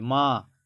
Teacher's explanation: मां नाक और मुंह दोनों से निकल रहा है · तो चांद बोलते टाइम आपका आवाज़ नाक से भी थोड़ा निकल रहा है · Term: चंद्रबिंदु